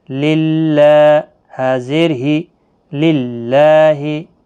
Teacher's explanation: اللہ کا لام باریک پڑا جائے گا زیر کی وجہ سے